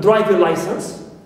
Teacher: we have the word driving license, so we stress driving, primary stress, clear. And the other one takes secondary.